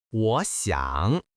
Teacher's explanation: là hai thanh ba, nên phải là 'wó xiǎng'.